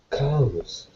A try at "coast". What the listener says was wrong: You know what you were doing? You were pronouncing it like C-O-S-T. That's what you were doing. C-O-S-T. that? Oh, C-O-S-T. Right. What vowel sound is that? Uh, cost. Cost. Dog. Right. So C-O-S-T uses the A-W sound. C-O-A, C-O-A-S-T uses what vowel sound? Coast.